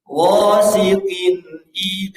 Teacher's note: nunnya jelas terdengar oleh kita dan tidak dipanjangkan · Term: izhar halqi